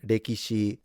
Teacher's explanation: the L transforming into an R because the Japanese don't have the L, so they have to approximate.